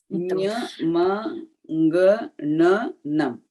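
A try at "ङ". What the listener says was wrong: Nga, you should not, stress. The throat should not be involved in the pronunciation of nga. It should just be a Anunasika.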